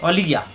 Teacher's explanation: ওয়ালিয়া জিব্বার মাঝখানে উঠে তালুতে